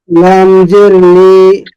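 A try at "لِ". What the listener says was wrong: একটু আর একটু তাড়াতাড়ি বললে সুন্দর হবে যেমন লামজের লি উচ্চারণ হরফ ঠিক আছে উচ্চারণগুলি আর একটু তাড়াতাড়ি করলে বা আর একটু সুন্দর শোনা যাবে যেহেতু হরকতের উচ্চারণ তাড়াতাড়ি করতে হয় খেয়াল রাখবো সামনে থেকে ইনশাল্লাহ শুনছিলাম পড়া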